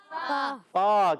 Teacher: فا کی ادائیگی ہوتی ہے اوپر والے دانتوں کے کنارے جب نیچے والے ہونٹ کے تر حصے سے لگتے ہیں تو ادا ہوتا ہے فا۔